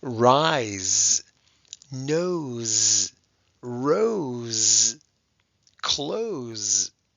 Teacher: Usually when S is in a one-syllable word, when it's after a vowel, many times it could have a Z sound. S can also sound like a Z when it comes between two vowels